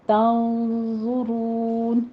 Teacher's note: تنظرون، نون ساکن کا قاعدہ ہمارا یہاں پہ اخفا حقیقی جو کہ پر کیا جائے گا، آگے زوا ہے، حروف مستعلیہ میں سے زوا کے اوپر ضمہ ہے، ہونٹ گول کر لیجئے اور زوا کو پر بھی پڑھنا ہے، آگے را کو بھی مفخم کرنا ہے اور را کی واو مدہ ادا کرتے ہوئے مدارس وقفی کر دیں گے، یہاں پہ 6 کاؤنٹ کرنا ہے۔